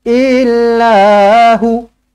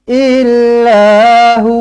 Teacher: Kalau nak berhenti dekat sini, hu baca 2 harakat. Jangan 1.